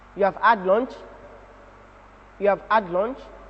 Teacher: The pitch of the voice rises, indicating the rising tone.